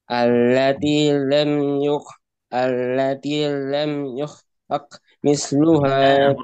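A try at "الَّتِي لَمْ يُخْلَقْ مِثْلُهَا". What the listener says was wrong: Qafnya hati-hati. Allati lam yukhlaq. Itu dipantulin.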